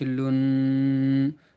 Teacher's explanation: نون کے اوپر دیکھیے تشدید ہے، لہٰذا نون کو 2 مرتبہ پڑھیں گے. ایک بار پیچھے والے حرف لام سے ملا کر اور ایک بار خود نون کو.